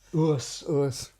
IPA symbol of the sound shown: ʊəs